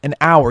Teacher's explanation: Now, hour actually starts with an H, but it's silent. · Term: silent H